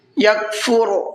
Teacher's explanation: را کو پر کر کے پڑھنا ہے